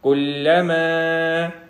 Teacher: یہاں پہ آگے الف آ رہا ہے جس کی وجہ سے چھوٹی مد ہے، اس کو 1 سے 3 گنا لمبا کریں گے